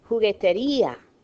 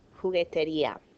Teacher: You hear me breaking the diphthong. There's a weak and a strong. Accents on the weak, it's breaking it apart.